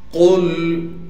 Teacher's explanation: قاف کو لام سے ملائیں گے اس لیے کہ لام ساکن ہے اور قاف کو موٹا کر کے پڑھنا ہے